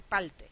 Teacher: la r y la l pasan a ser el mismo sonido con lo cual van a ser alófonos del mismo fonema Entonces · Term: neutralización